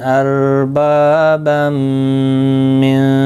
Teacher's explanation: تنوین کے بعد یرملون کا میم آیا ہے، ادغام مع الگنہ ہوگا، گنہ کے ساتھ پڑھیں گے